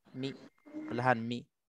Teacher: qasrun ma'ar raum. 2 harakat beserta raum.